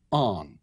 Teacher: the ending has been leveled out to an indiscriminate back vowel, a vowel in the back of the mouth, o, and a nasal. A nasal is M or N, because the sound goes on in the nose.